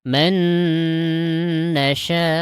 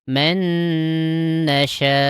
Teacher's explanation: Nah ada hamzah. supaya hamzahnya nampak, maka agak sedikit naik suaranya gitu. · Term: nabr